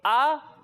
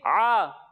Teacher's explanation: जब हम हमजा की अदायगी करेंगे तो इसे हम हलक के निचले हिस्से से पढ़ेंगे। कहाँ से पढ़ेंगे? हलक के निचले हिस्से से। और जब हम आइन की अदायगी करेंगे तो इसे हम हलक के दरमियाने हिस्से से पढ़ेंगे।